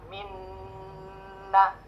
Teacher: Rasakan ketika kita baca minna, itu di dalam rongga hidung kita bergetar. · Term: al-khayshum